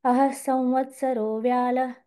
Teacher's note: अह तिथे विसर्ग आहे. अहह असं पण ऐकू येईल कदाचित.